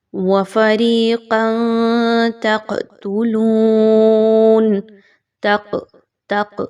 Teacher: تق یہ قاف جو تھوڑی سی ہلائی جا رہی ہے یہ بھی قلقلہ کا اصول فالو کیا جا رہا ہے۔